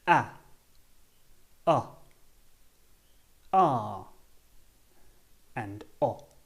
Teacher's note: to make these sounds our mouth should be almost wide open and it feels like the sound is coming from the bottom of the mouth